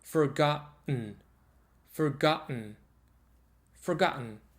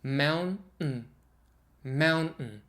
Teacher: the double t is actually the glottal stop